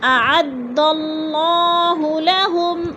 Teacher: اعد اللہ، اللہ پر پڑھا جائے گا اس لیے کہ اللہ سے پہلے لفظ دال کے اوپر زبر ہے تو اللہ کو پر کر کے پڑھیں گے